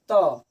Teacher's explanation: जो हमारा जीभ है वह दांत में टच कर रहा है